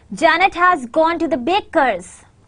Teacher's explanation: there is a stress on the word Janet and baker's